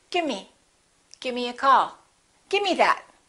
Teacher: with give me sometimes you will hear people say give me instead of the v they just drop the v